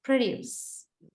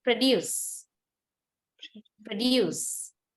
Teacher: the latter part which means the second syllable is much more heavier than the first syllable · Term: final stress